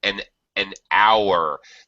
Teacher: the H is silent so it starts with a vowel sound